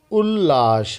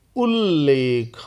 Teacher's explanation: त के बाद यदि ल हो तो त ल में बदल दिया जाता है